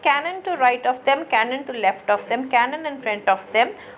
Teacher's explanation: the first syllable will be accented and the second and third will be unaccented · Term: ductile meter